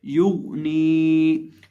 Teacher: नून को एक अलिफ के बराबर खींच के पढ़ेंगे, या को होंठों को गोल करके पढ़ेंगे, गैन को मोटा करके पढ़ेंगे